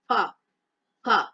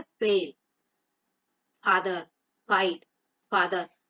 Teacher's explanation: जब हम उच्चारण करते हैं तो हमारा निचला होंठ ऊपरी दांतों को छुआता है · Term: नुक्ता वाला फा